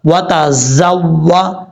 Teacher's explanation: تا زبر تا زا واو زبر زو واو زبر وا وَتَزَوَّ زا کو پڑھتے ہوئے سیٹی آئے گی